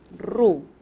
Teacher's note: esa letra r a veces en la primera es la vibrante múltiple